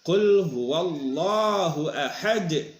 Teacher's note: Dalnya ini karena berhenti, maka ini harus dijadikan ada pantulan suara yang kita kenal dengan qalqalah